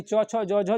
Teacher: ये च वर्ग जो होता है इसको तालु से बोलते हैं, जीभ के तालु से। च छ ज, जैसे आप बोलिएगा तो आपका तालु जो है, जीभ और तालु का स्पर्श होगा, यानी जीभ और तालु एक दूसरे से सटेगा।